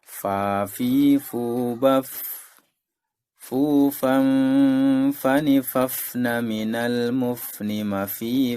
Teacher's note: Di manakah letak makhraj huruf fa? Makhraj huruf fa yaitu adalah bibir bawah bagian dalam mengenai ujung gigi seri atas.